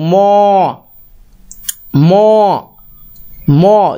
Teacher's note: जब बोलते हैं मौ मौ तो ये नासिका हो जाता है